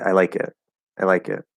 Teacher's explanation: kind of just falls at the end it's period that tells the person we're done with that sentence